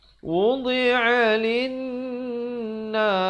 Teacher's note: Lin itu didengungkan 2 harakat wajibul gunnah